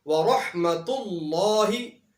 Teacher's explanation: وَرَحْمَةُ اللہ کے اندر لفظ اللہ سے پہلے پیش ہے تو یہاں پر لفظ اللہ کو موٹا پڑھا جائے گا